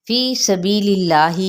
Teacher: फ़ी सबीलिल्लाही यहाँ पे या मद्दा, बी पे भी या मद्दा। अब यहाँ पे इसमें जलाला बारीक पड़ा जाएगा क्योंकि पिछले हरफ पर ज़ेर है